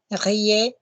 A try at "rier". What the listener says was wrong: Don't make the r bigger than the vowel. Go again.